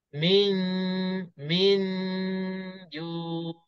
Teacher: satu harakat dia masih keluar dari hidung kita, min. Satu harakat yang kedua itu, pertengahan lidah kita dah terangkat untuk nak sebut jim. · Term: ikhfa hakiki pertengahan